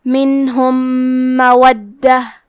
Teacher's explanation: کلمت مودہ میں دال پہ تشدید ہے تو ہمیں 2 حرف کے برابر دال کو پڑھنا ہے